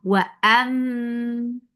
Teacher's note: This gunna is akmal, so keep the sound in your nose for a longer time. Wa ammal. For fatha open jaws attached lam.